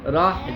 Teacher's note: اور یہ ہا جو ہے نا یہ گلے کے درمیان سے آئے گی. راہ جیسے ہم سانس لیتے ہیں ایسے.